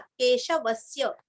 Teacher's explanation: केशवस्य, व के ऊपर आघात